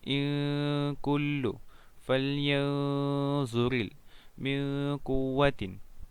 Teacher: Yang keenam, ikhfa hakiki. Membacanya samar dengan dengung dan ditahan selama 3 harakat.